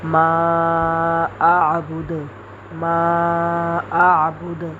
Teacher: دال کو ساکن کریں گے تو اس کے اوپر قلقلہ ہوگا، یعنی کہ ڈبل آواز آتی ہے